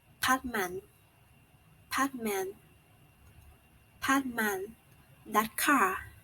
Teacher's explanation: the glottal stop can appear as a realization of syllable final t before the following consonant